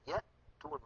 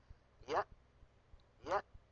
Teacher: وبعد ذلك أيضا عندنا مخرج الهمزة المتحركة من نفس المكان. إذا نطقنا همزة ساكنة نقول يأتون مثلا، يأ يأ، فنجد أن الوترين الصوتيين ينقفلان تماما